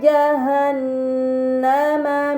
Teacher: pada kata jahanama terdapat Nun bertasdid ini dinamakan gunah